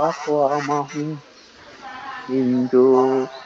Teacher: মিম সাকিনের পরে যদি মিম থাকে তাহলে প্রথম মিমটাকে বাদ দিয়ে দ্বিতীয় মিমের সাথে পড়তে হবে গুণনা করে মিলিয়ে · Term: মিম সাকিনের নিয়ম